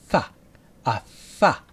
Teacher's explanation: sound with our bottom lip and upper teeth ha ha ha it's voiceless like a whisper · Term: F sound, f sound